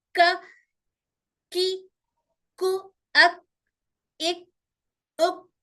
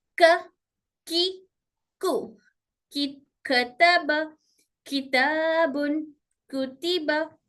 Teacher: काफ जबान की जड़ और सख्त तालु से अदा होता है